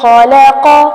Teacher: خلق خا اور قاف پر کیا جائے گا